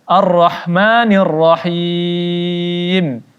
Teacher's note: Him, mad arid disukun di sini dibaca 4 harakat.